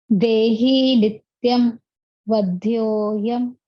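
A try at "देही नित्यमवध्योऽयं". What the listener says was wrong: It's very nice, but you're saying nityam vadyoyam, right? Now you have to put your emphasis, because remember, this is not ma with halant. Dehi nityama vadyoyam. In fact, even the ni, you will put a little pressure on it. Dehi nityama vadyoyam.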